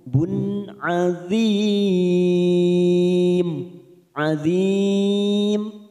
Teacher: doma tanwin bertemu ain, namanya bacaan idhar halqi, kita baca jelas tanpa mendengung